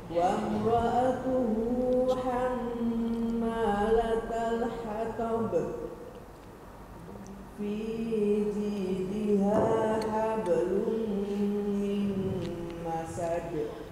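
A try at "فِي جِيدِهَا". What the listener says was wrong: Fiji-nya kepanjangan. Fijidiha.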